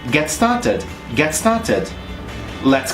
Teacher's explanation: I also try to connect get and started